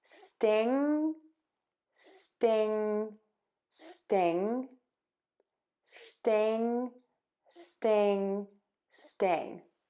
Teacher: NG, tip of the tongue is down, back of the tongue is pulled up. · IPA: stɪŋ